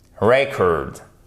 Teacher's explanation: Vous avez l'accentuation non pas sur la seconde syllabe, mais sur la première. Et le E ne se prononce pas comme un I court, mais comme un E.